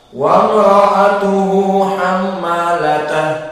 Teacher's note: Namun jika dia dibaca dengan sukun di hamalata, disukunkan, maka dia akan menjadi ha. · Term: ta marbutah